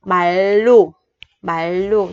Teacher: Thì cái chữ r thứ hai á, tức là chữ r này, mình sẽ đọc thành chữ l trong tiếng Việt ha. Nó thành bại lù, bại lù.